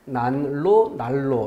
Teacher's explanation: 앞말의 받침 니은이 리을로 바뀌는 방식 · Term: 유음화